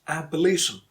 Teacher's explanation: In the word abolition, you stress li because that's the second to last syllable. Last syllable is shin and second to last is li.